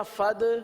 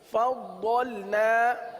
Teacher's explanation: ضاد کے اندر جماؤ کریں گے، صفت استطالت کی وجہ سے